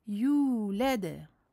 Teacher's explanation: Med tabi'i harakatain, 2 temps. On prolonge donc la dhamma du ya de 2 temps. Et on procède à la qalqala finale, donc de fin de verset, cette fois-ci qalqala kubra.